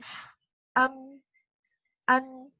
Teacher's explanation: Untuk mim dia keluar dari kedua bibir dan juga keluar dari al-khayshum. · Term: mim dan nun